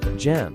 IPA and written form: dʒɛm (gem)